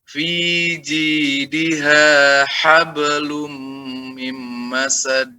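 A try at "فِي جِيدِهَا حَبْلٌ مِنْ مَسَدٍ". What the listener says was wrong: Itu dijeda Pak. Saya minta tipis bukan jeda.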